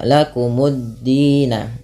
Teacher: Dina ada mad tabi'i panjangnya 2 harokat.